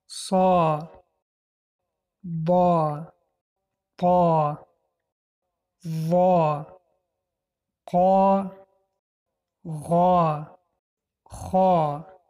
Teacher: دهان را پره کرده قفای زبان را به بالا برداشته خوانده می شوند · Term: حرفهای استعلا